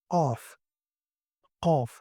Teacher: it produces at the very back of your throat. It's a uvula area. Okay, and it's similar to ka, but it's kind of deeper and heavier.